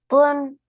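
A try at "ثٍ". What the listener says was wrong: No, no, don't make your lips rounder. Just say thin, thin.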